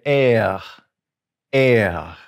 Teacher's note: this is going to be in the back of the throat and you're going to just sort of push air through the back and say er er s is s is now that's actually